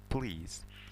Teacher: Mana ikkita unli A va I. Ikkita unlining o'rtasida kelayotgani uchun Z o'qiladi bu.